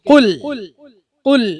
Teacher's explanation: കാഫ് മാത്രം കനപ്പിക്കുക ലാമിനെ നേർപ്പിക്കുക